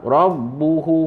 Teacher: hu tu panjang, dua harakat